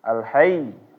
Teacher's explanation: Kalau misalnya enggak tasdid. Tapi karena tasdid, ketika iya-nya ini ditekan sedikit, suaranya agak naik.